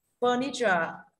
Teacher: Furniture danh từ trọng âm âm tiết thứ nhất